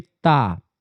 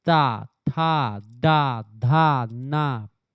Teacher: जीभ आपके दांत पर जाकर यानी कि यह दंत व्यंजन है।